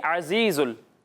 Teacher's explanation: ज़ा में सीटी की आवाज़ आएगी।